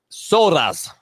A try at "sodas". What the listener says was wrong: Sodas. Okay, you was rolling your tongue, so okay. Soda. Sodas.